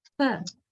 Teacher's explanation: The lower lip is touching the upper teeth. Actually, to tell specifically what's happening, we bite the lower lip with the upper teeth, don't we? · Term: labiodental sound